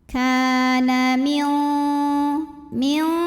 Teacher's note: Karena ada alif didahului baris fathah, maka kaf panjang 2 harokat. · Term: mad tabi'i